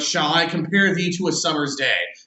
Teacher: So simply put, iambic pentameter, it has a rhythm to it. It alternates between unstressed and stressed syllables. When you're reading it in the rhythm or in the proper meter, it kind of has a ba ba ba ba ba ba.